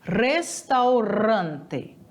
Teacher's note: O R sempre vai ser vibrante, então é restaurante.